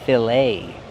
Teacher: We see the ET making a long A sound, like say and day.